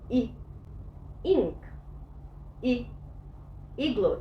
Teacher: يبقى الاي as a short vowel بتحس انها مكسوره، بقول اي اي، وشفايفي مش مبتسمه، لا مشدوده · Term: short I